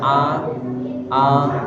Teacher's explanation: Jadi dia keluarnya tidak terlalu a tapi tidak tidak terlalu e juga